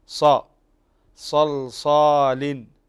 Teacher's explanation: فالصاد عندنا هنا من حروف التفخيم وهو كذلك مستعل ومطبق، فتنتبه إلى التفخيم في الصاد ص صلصال، فتنتبه إلى التفخيم في الصاد، وينتبه باقي الإخوة كذلك أن الحروف المفخمة كما ذكرنا مجموعة في قولك خص ضغط قض، هذه الحروف تفخم بصفة دائمة.